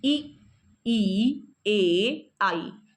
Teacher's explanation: हमारी जीभ के अग्रभाग से ई, ए, आई, इन 4 स्वरों का उच्चारण होता है